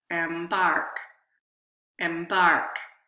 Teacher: so the second vowel had more stress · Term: primary stress